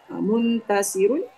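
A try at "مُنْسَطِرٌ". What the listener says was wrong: Munsatirun. Munsatarun.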